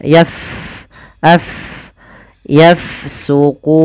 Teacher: huruf Fa dia sukun maka kita alirkan nafasnya